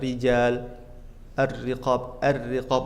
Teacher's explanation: ra kalau kasrah harakatnya dibaca tipis, ri. Begitu juga ini.